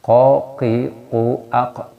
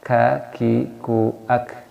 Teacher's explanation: Kaf dan kof, pangkalnya atau cabangnya di bagian aksol lisan, pangkal lidah kita. Tapi kalau kof ke belakang, sini lebih ke belakang kof. Kalau kaf sedikit ke depan, kaf.